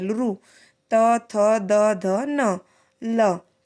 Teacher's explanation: और दंत्य में दांत से टच करती है, दांतों से हमारी जीवा टच करती है।